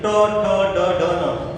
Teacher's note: जबान थोड़े से ऐसा लग रहा होगा कि मुड़ रही है अंदर, तो मुड़ रही है तो मुड़ से याद रखना मूर्धन्य वर्ण।